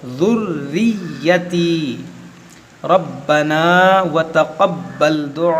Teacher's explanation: रा को मोटा करेंगे, बा को खूब जमाव के साथ पढ़ेंगे